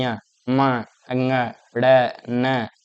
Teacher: ञ बोलो नाक का ज्यादा इसमें इस्तेमाल हो रहा है। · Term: नासिका